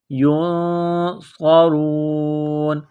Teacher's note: نون ساکن کے بعد صاد ہے تو یہاں غنہ کریں گے، اخفا کریں گے، آواز ناک میں چھپائیں گے